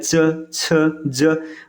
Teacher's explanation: कुछ घर्षण के साथ वायु बाहर निकलता है तो इसको स्पर्श संघर्षी कहते हैं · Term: स्पर्श संघर्षी व्यंजन